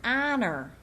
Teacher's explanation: Now, let's understand what an unsounded h sounds like. In the word honor, you don't feel your breath.